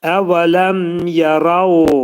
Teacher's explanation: Mim hərfi izhar olur. Açıq oxunur, baxmayaraq ki, mimdən sonra yə gəlir. Burada idğam olmayacaq.